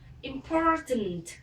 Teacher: Âm tiếp theo là âm O dài cong lưỡi